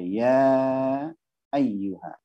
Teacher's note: dibaca panjang, ya, dibaca panjang 6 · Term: mad jaiz munfasil